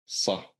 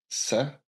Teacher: So if you say sa, the tongue is basically down. It doesn't move.